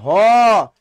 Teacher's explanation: ভ শ্বাস বেশি লাগছে এটা কিন্তু মহাপ্রাণ ধ্বনি কারণ বর্গের দুই এবং চার এটা হলো মহাপ্রাণ ধ্বনি দুই এবং · ভ হলো এই যে দেখো ভ, শ্বাস বেশি লাগছে, এটা কিন্তু মহাপ্রাণ ধ্বনি